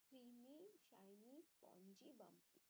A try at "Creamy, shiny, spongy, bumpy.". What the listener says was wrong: Super, very good.